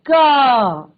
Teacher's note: यस, गले से, बिल्कुल गले से हमारी जो हवा है वो एकदम गले से आ रही है।